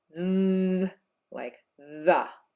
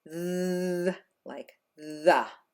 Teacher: stick out your tongue and blow, but we activate our vocal cords as well. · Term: voiced TH